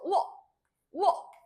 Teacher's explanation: 반모음 우에다가 단모음 어가 더해져서 우어 이렇게 됐었잖아요. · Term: 이중모음